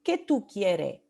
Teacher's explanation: la s final en muchos casos no se pronuncia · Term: la pérdida o la edición de la s final